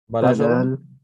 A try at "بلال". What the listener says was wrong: Oh, Bilal, not Balal. Balal is like wetness.